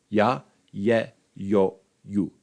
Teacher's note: The soft vowels are used to show that the preceding consonant is palatalized, or 4 of them can be used at the start of words, in which case they represent the sequence of a palatal approximant followed by a vowel